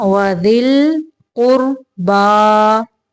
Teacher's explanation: یہاں پہ را ساکن کو موٹا پڑھیں گے